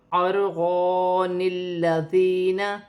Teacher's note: لیکن اگر ہم نے پچھلی آیت پر وقف نہیں کیا ہے تو یہاں آیت کے آخر میں نون کتنی ہے، نون کتنی کو لام کے ساتھ ملا کر پڑھا جائے گا اور الف کو چھوڑ دیا جائے گا